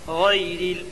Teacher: غین یا لین ہوگی یا ساکن سے پہلے غین کے اوپر زبر کی حرکت ہے، اس لیے یا لین ہوگی۔ یا لین کو نرم آواز کے ساتھ جلدی ادا کریں اور معروف پڑھیں